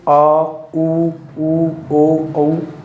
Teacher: पश्च स्वर, जिन स्वरों के उच्चारण में जीभ का पिछला भाग प्रयोग किया जाता है